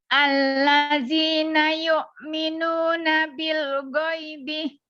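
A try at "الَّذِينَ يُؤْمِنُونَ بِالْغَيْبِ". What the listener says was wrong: Nah, bagus ya, bisa ya. Bil ghaibinya jangan sampai mantul ya.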